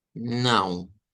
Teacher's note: Y nuevamente me quedo con esa U corta en vez de la W.